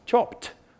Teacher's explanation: So in English, when you have a past tense at the end of a word, ed, a regular past tense, the voicing of the previous phoneme determines how the ed is pronounced. So this one's unvoiced, p, which means we'll pronounce ed as t, because t is unvoiced also.